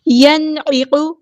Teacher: نون ساکن کو یہاں ہم نے ظاہر کرنا ہے، یہاں پہ اظہار ہو رہا ہے کیونکہ نون ساکن کے بعد حروف حلقی میں سے عین آیا ہے ، عین کو وسطی ہے لیکن مڈل تھروٹ سے ادا کرنا